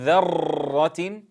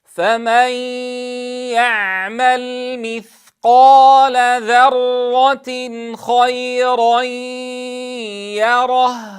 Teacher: عدم توليد أكثر من راء، فلا نقول ذرة.